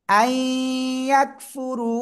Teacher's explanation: নুন সাকিনের পরে ঈদগামে বাগুন্নার অক্ষর ইয়া, গুন্নার সাথে মিলিয়ে পড়বো।